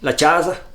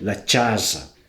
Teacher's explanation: A consoante “c” do friulano, a tendência é que ela seja o “tch”